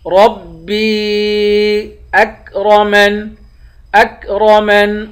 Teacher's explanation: حروف مدہ میں سے ہے، ربی، را کو پر پڑھیں گے، با کو یا سے ملا کر یا کو تین الف کے مقدار کھینچ کر پڑھیں گے